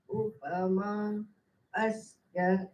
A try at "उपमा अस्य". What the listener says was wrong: ய வந்து ஸ்வரிதா இது உதாத்தா அஸ்ய கீழே அனுதாத்தா போகக்கூடாது.